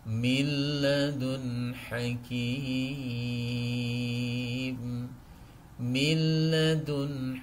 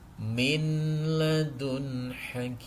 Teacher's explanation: dengan lam maka Inilah yang disebut dengan bacaan Idgham bila ghunah cara membacanya langsung memasukkan Nun ini ke dalam huruf lam seakan-akan tidak ada nunnya